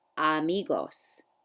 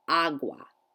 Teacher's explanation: notice how every time the letter a popped up in a word I said ah